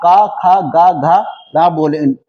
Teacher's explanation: जब आप का, खा, गा, घा, रा बोलेंगे तो ये कंठ से इसकी आवाजें निकलेंगी। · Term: कंठ व्यंजन